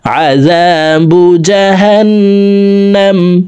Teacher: এখানে ওয়াজিব গুন্না 3 সেকেন্ড পরিমাণ গুন্না করে পড়ব